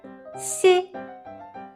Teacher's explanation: you need to approach the front hard palate with the front tongue, but there is still a gap between them, so they are not touching it.